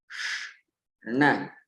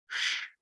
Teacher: to say na, you need to kind of push slightly your tongue, the tip of your tongue, into that hard palate above your upper teeth, and say na.